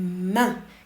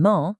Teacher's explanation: For ah in a word like main, you're pulling your lips back. But for oh in mon, you're pushing them forward. It's all about that forward projection.